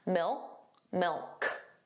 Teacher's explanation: So you put your tongue in the position of a K, milk, but you just don't push out that sound.